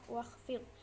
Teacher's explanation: Huruf wawu di situ makharijul hurufnya yaitu di asyafatain, bertemunya bibir atas dan bibir bawah.